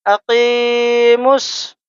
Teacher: میم کو ہم ڈائریکٹ صاد سے ملائیں گے، الف لام کو ہم نہیں پڑھیں گے ، نہ اس الف کو پڑھیں گے نہ ہی واو کو